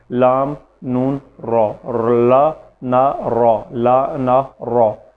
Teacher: دونوں طریقے ہیں، تو کیونکہ ہم نے اس کو زبان کی نوک کے جو حروف ہے مخارج ہیں اس کے سیٹ میں رکھا ہے، تو اس لیے ہم اس کو زبان کی نوک کے انداز میں پڑھتے ہیں۔ لام، نون، را، لا نا را، لا نا را۔